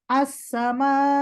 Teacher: নাবর মানে হামজার একটু জোরে বলবো, সাউন্ডটা বাড়ায় দিব। নাবর মানে প্রেস করব না।